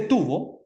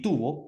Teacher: pronunciar tubo con los dos labios que se juntan y pronunciar tubo tubo con los dientes de arriba y los labios de abajo